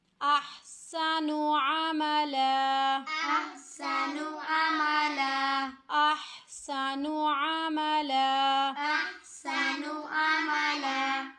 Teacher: احسن، احسن، اور نون کے اوپر پیش ہے، حرکت ہے تو اس کو بالکل بھی نہیں کھینچنا. اور جب بھی دو زبر کے اوپر ہم لوگ وقف کریں گے تو وقف کی صورت میں عملا ایک زبر پڑی جائے گی